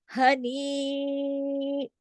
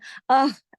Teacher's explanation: इस हा की आवाज गले से नहीं होती, ये जो हा है ये सीने की तरफ